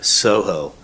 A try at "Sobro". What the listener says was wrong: Sobro. Yeah, you said Soho. Yeah, Sobro.